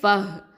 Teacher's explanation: ஃபஹ் இதில் வந்து ஹம்ஸ் சிஃபத்தை கொடுக்கணும் ஹ சுக்கூனுக்கு.